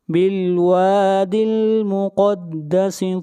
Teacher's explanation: کر پڑھیں گے، بالوادل واو کو کھینچ کر پڑھیں گے، مقدسی قاف کو موٹا پڑھیں گے، قاف حروف مستعلیہ میں سے ہے